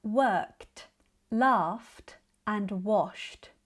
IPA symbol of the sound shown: t